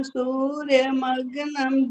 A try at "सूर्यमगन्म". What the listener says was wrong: गनम गलत बोल गया, बाकी ठीक था। सूर्य मगन्म, मगन्म, ठीक है। न आधा ना तो मगन्म इकट्ठा बोलेगा तो ठीक है। आवाज भी अच्छी, आपने बहुत अच्छा सुना है वैसे, बाकी सिर्फ मगन में जाकर के थोड़ा सा अशुद्ध हो गया।